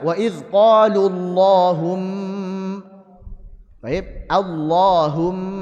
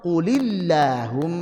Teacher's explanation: Maksudnya huruf lam pada lafaz Allah tebalkanlah. Kapan itu? Jika sebelumnya adalah fathah atau dommah.